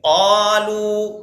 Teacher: قاف کو قلقلے کے ساتھ ادا کیجیے.